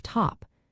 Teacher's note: pronounced as a puff of air at the start of top which is called aspirated